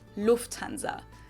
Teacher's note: the emphasis is on the first syllable, Lufthansa.